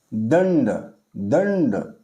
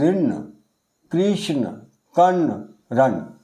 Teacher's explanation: जैसे उच्चारण करके देखें, यहाँ है दंड, दंड, या ना के हम उच्चारण करते हैं जीभ हमारी पीछे ऊपर स्पर्श करती है मुर्दा के साथ। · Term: मूर्धन्य ना